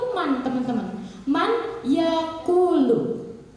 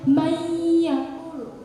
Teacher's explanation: Tapi karena nun mati bertemu dengan ya, yang dihukumi dengan idgham biguna, dibaca dengung, ditahan 2-3 harokat, itu bacanya mayyakulu. · Dengung, disertai dengung dengan ditahan 2-3 harokat. · Contohnya nun mati bertemu ya, mayyakulu. Ya-nya ini sudah mulai diucapkan ketika kita melihat man. Asalnya itu man teman-teman, man yakulu.